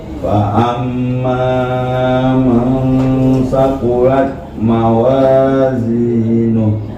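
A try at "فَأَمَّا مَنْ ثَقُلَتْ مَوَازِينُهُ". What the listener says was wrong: Hanya tadi ma-nya sempat terlalu panjang, kurangin. Yang gunanya yang ditahan. Fa'amma man, bukan fa'amma man, kepanjangan ya. Fa'amma man thaqulat mawazinuh.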